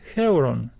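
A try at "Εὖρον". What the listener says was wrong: This is pronounced Ivron. Ivron. Ivron. Okay, he put a slight h before this, like Heuron, something h.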